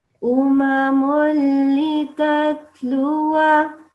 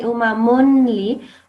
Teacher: Now, I think last time we said that when there is a tanween, like here, this one, you don't make the noon sound.